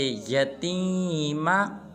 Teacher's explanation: تا کو ایک الف مقدار لمبا کرنا ہے